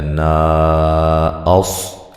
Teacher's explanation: یہاں نون پہ جو مد ہے یہ مد جائز ہے، الف مدہ کے بعد حمزہ دوسرے کلمہ کے شروع میں ہے